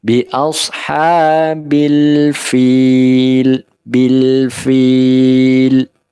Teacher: Bil ini lam sukun, jangan sampai terjadi qalqalah, ya, bila tidak boleh, harus dikendalikan.